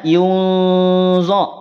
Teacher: Kalau yunzo tipis, tapi kalau yunzo diangkat pangkal lidahnya, dia menjadi tebal.